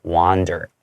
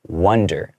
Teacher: Here, this is more wander. You open up the space in your mouth with a ah sound, like it's more wander.